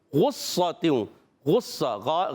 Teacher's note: غین کی ادائیگی ہوتی ہے حلق کے اوپر والے حصے سے